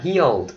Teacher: nó là cái tense vowel e, cho nên buộc mình phải căng cái miệng tí xíu à, healed, để nó khác với cái chữ hill.